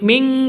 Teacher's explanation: Cara bacanya samar didengungkan, siap-siap ke huruf kafnya ditambah ng. Nun matinya ditambah ng. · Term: ikhfa hakiki